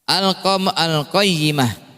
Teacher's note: Qaf termasuk izhar qamariyah. Ya, berarti lamnya terbaca.